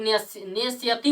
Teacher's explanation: इसके जब नेस्यति बोलेंगे ना, तो हमको दंती स का उच्चारण नहीं होता है, हमको आधा मूर्धन्य का उच्चारण होता है, इसीलिए इसके दंती स के जगह पर आधा मूर्धन्य लिखते हैं, ठीक है।